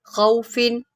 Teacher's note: خوا کو موٹا کریں بیکاز یہ حروف مستعلیہ میں سے ہے